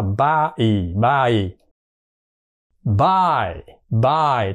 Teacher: Rồi qua cái nguyên âm của nó là cái âm kép là I, I. Thì mình đọc là A rồi mới kết thúc bằng Y.